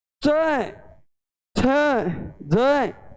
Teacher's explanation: च छ ज, इन व्यंजनों का उच्चारण करते हैं तो ये अपने मुख से अचानक बाहर न निकल कर थोड़ा सा मुख में संघर्ष करते हैं। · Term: स्पर्श संघर्षी